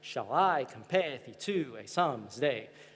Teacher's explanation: every line also follows this alternating stress pattern, what we call the iambic pentameter